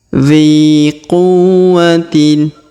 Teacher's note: Huruf dzi kita panjangkan 2 harokat karena di depannya terdapat ya sukun.